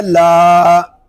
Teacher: کاف لام زبر کل، لام الف زبر لا، کلا۔ لام کو ہم ایک الف تک کھینچ کر پڑھیں گے کیونکہ یہاں پہ الف مدہ ہو رہا ہے